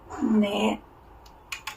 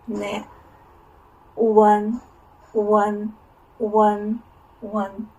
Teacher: Its final is a compound final that have two letters, U and N. This group says one. It ends with the front nasal sound.